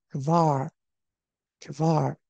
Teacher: 这个▁k▁后面呢，它是没有元音的，但是你读的时候可以稍微带一个▁a▁的音也是可以的